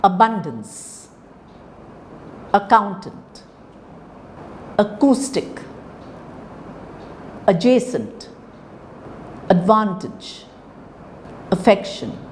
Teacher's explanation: words of three syllables with the stress on the second syllable